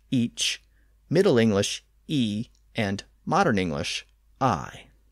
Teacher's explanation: originally pronounced each in Old English usually spelled I or I in much of England that CH sound was lost at the end in Middle English so the word evolved from each to e and then thanks